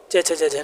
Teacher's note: च वर्ग जो है वो आपका तालु से बोला जाता है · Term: तालव्य